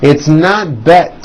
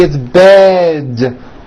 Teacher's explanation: Bed has a voiced D ending. It's not bet with an unvoiced T, it's bed with a voiced D.